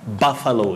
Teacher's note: That letter U takes what we call the mid-central sound buffalo. Just like you say bungalow, not bungalow.